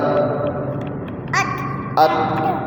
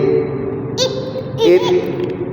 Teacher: فٹافٹ آواز بند، لچک ویبریشن. اس کو قلقلہ نہیں کرنا